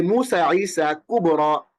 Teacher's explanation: আরেকটা এক্সাম্পল আমরা এখানে দেখে এসেছি, এই যে কুবরা, এটাও দেখতে পাচ্ছেন, যেখানে শেষে একটা ইয়া আছে, তার একটা জবর আছে, পাঠা আছে, কিন্তু এইটা খাড়া জবরের মতো উচ্চারণ হচ্ছে। হ্রস্ব আলিফ বা ছোট আকৃতির আলিফের মতো উচ্চারণ হচ্ছে কুবরা, এবং টান দিয়ে পড়া হচ্ছে কুবরা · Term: আলিফ মাকসুরা